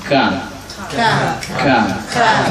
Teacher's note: Makhrajnya dari pangkal kaf, pangkal lisan setelah qaf ya